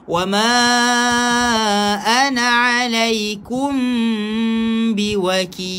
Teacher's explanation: Mim berjumpa dengan ba, ingat baca dengan ikhfa syafawi, dengung.